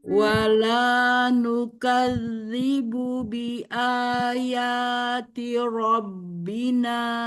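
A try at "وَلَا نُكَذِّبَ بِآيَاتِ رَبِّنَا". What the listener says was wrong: Nah, tinggal di robnya, tidak robbina, tapi rabbina. Rob. Jadi kalau ro itu tidak disertai dengan mulutnya ro, tapi Zalnya di ro. Wala nukadzibu bi ayati rabbina.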